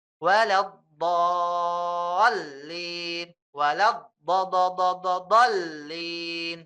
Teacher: 3 alif itu berarti 6. Panjangnya 6 harokat ya. Karena ini termasuk golongan mat lazim ya.